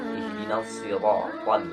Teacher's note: Yang ketiganya pengucapan huruf ro. Awas, pengucapan huruf ro ini tidak lebih dari 2 getaran.